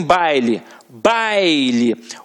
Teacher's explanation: Aqui em baile, baile, o A é a vogal e o I é a semivogal